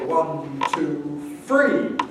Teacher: very well known one is what we call th fronting whereby the dental fricatives are replaced by labiodentals